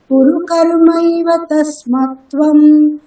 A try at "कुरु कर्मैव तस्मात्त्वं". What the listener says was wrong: तस्मात् আকার দীর্ঘ,